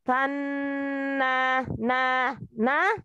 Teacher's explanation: huruf nun. Bertasdid itu adalah gunnah, maka keluarkan gunnahnya 2-3 lepas. Tanna na na, jangan ditahan, dikeluarkan aljaufnya, ya.